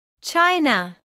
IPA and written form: ˈtʃaɪnə (China)